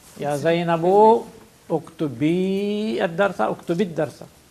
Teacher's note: But because ya sakin and lam sakin, we drop the ya. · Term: iltiqa sakinain